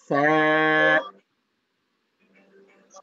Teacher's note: জিহ্বার আগা সামনের উপরে দুই দাঁতের আগার সঙ্গে লাগিয়ে উচ্চারিত হবে